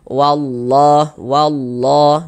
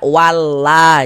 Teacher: Huruf lam jalalahnya itu kita baca tebal, kita baca tabkhim.